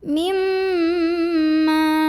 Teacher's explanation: Cara bacanya dengungkan bunyi M-nya, tahan bunyi M-nya, kurang lebih 2 harokat. Mimma. Ma mad tabi'i karena ada alif yang didahului baris fathah. · Ma mad tabi'i karena ada alif yang didahului baris fathah. Maka cara bacanya dipanjangkan mimnya 2 harokat. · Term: gunnah